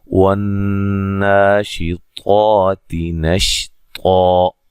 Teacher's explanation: نون مشدد پہ غنہ ضروری ہے، مد اصلی ہے، اور طا کو موٹا ادا کریں گے